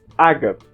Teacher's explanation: o a aparece mais fechado no português europeu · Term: A mais fechado